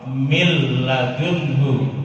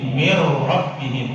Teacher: Kalau ada nun bertemu dengan lam atau roh, mil ladunhu, dia dimasukkan, nunnya sudah nggak ada lagi, masuk menjadi lam, kemudian ditekan